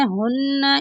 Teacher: نون مشدد پر غنہ کریں گے۔ غنہ کا مطلب ہے ناک میں آواز لے جانا۔